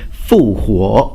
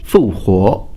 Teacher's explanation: That's first tone, second tone, by the way, Sunda in Mandarin Chinese, and the female version is called Fu Huo, fourth pitch, third pitch, Fu Huo